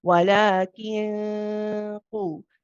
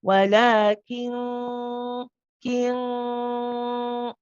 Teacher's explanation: you actually go to the makhraj and you press on the qaf as you pronounce the gunna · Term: heavy gunna sound